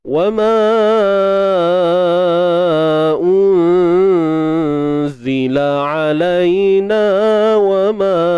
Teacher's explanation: Nun mati bertemu zai, IKH, ikhfa haqiqi. Huruf zai huruf nipis, maka ikhfa di sini ataupun dengung di sini pun nipis juga.